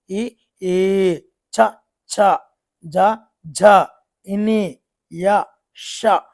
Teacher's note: తాళవ్యము అంటే తాలువు అంటే దవడ భాగంలో పుట్టే అక్షరాలండి. ఈ, ఈ, చ, ఛ, జ, ఝ, ఇని, య, ష ఇవన్నీ కూడా దవడ నుండి పుడుతున్నాయి కాబట్టి దానిని తాళవ్యాలు అంటారండి.